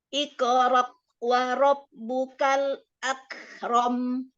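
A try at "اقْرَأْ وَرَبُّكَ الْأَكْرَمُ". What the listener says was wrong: Ya, Bunda tuh hamzahnya masih naik makhrajnya, bukan di bawah tenggorokan. Nah, contoh ya, kalau yang hamzah di akhir ya, Anda kasih contohkan yang hamzah di akhir waqaf ya, misalnya waqaf di akhir hamzah. As-sama, segitu.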